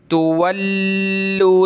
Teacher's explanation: ان تولوا، تا پیش تو، واو لام زبر ول، لام واو پیش لو، تولوا سخت کریں گے لام کو تشدید کی وجہ سے